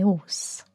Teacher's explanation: You would just drop the H altogether